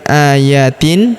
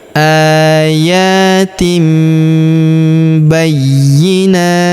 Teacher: Tanwinnya, tanwin in berubah menjadi mim ya. Ayatim, jadi bukan ayatin tapi ayatim bayyinat.